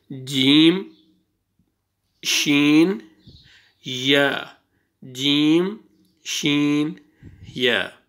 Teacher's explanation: ये देखें ज़बान ऊपर, ज़बान का दरमियाना हिस्सा जो है ना ये तालु के साथ ऊपर लग रहा है